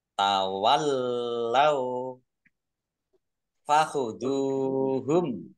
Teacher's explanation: lam nya dibaca dobel ada tasdidnya